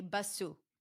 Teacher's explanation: You're adding a vowel sound at the end and you're changing the number of syllables. Instead of one syllable, it becomes two syllables.